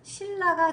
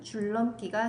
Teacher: 니은이 리을을 만나서 또는 리을이 니은을 만나서 유음이 아닌 니은이 유음, 리을로 바뀌는 현상입니다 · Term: 유음화